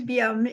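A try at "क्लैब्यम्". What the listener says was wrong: Kleibium. No, because the adjective form is liba, and it makes the vridhi from the E to I, so kleibium.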